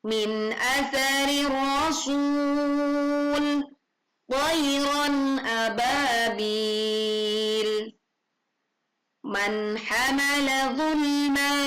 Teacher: membaca nun sukun bertemu dengan hamzah dan suara yang ditimbulkan adalah jelas dan bukan memantul